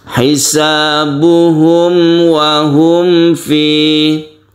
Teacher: mim mati ini makhrajnya ada di bibir Oleh karena itu mulut kita dalam bahasa Jawa itu hendaknya mingkem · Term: Izhar Syafawi, idhar syafawi